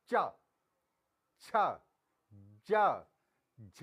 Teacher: हमारी जीवा है वो तालू से लग रही है। तो इसलिए जो च वर्ग के जो पांचों वर्ण हैं ये तालु, उच्चारण स्थान इनका तालु होगा।